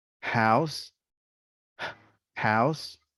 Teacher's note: It is a glottal sound. It is a voiceless sound in a fricative, and it happens here, in the glottis, the vocal cords. It's like when you are breathing, something like that. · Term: H sound